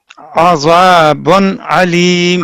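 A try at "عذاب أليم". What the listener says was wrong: عذاب، عذاب کو نرم رکھیں، اللہ تعالیٰ محفوظ فرمائے سخت نہیں کریں، زے کے ساتھ نہیں، دال کے ساتھ عذاب ہے ہی بڑی چیز ہے تو اس کو سخت کیوں کرتے ہو؟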